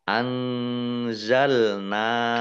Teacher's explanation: nun sukun bertemu dengan huruf za, bacaan ikhfa, dibaca samar-samar. Nun fathah alif mad tabi'i, panjang 2 harokat.